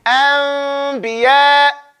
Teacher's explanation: So you say, Anbiya. And so the lips only touch when you come out with the ba at the end of it.